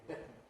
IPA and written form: ˈbɪtn̩ (bitten)